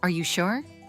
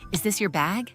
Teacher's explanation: Voice goes up at the end. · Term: rising intonation